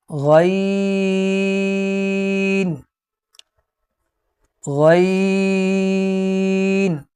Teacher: اس کو بھی موٹا پڑھیں گے اور یہ حلق کے اوپر والے حصے سے ادا ہوگا